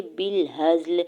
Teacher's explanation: با کی زیر کو لام ساکن کے ساتھ ملاتے ہوئے پڑھیں گے، ہا کے زبر کو زا ساکن کے ساتھ ملا کے پڑھیں گے۔ لام کے نیچے زیر ہے، آگے آیت کا وقف ہے، وقف تام، وقف کرنے کی صورت میں لام کو ساکن کر دیں گے۔